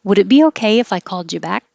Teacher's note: the d and a y make a ja · And this, if I called you, I said it perfectly the first time instead of called ya. The D and a Y make a J